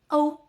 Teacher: Think of the o in go, but rounder and fuller. Start with o, with your lips rounded o. Then glide into u.